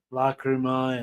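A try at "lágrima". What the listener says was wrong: yeah, lagrima. Yeah. In Latin it's lacrima and in Spanish is lagrima.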